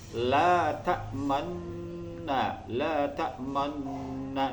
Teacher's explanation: Jadi cara membacanya adalah memonyongkan atau mencucukan bibir itu di tengah-tengah ghunnah. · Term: ismam